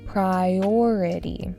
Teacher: emphasis on the second syllable